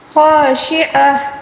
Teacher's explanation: آخر میں جو وقف کے دوران گولتا ہے، اس کو گول ہا کے ساتھ تبدیل کر کے پڑھیں گے، اور جو تنوین آیا ہے تنوین کو بھی ساکن کے ساتھ تبدیل کر کے پڑھنا ہوگا، ٹھیک ہے۔